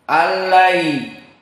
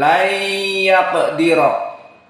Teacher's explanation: Maka yang ghairu gunnah di sini allai tidak panjang, allai, tapi lai yaqdira panjang karena gunnah. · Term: idgham bi gunnah